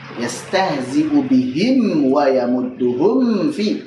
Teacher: Liqurbiha, karena makhrajnya mim dengan fa berdekatan. Jadi liqurbiha itu maksudnya mim dengan fa.